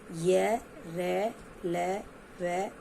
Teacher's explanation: इनका उच्चारण जीभ, तालु, दांत और ओठों के परस्पर सटने से होता है, किंतु पूर्ण स्पर्श नहीं होता। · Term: अंतस्थ व्यंजन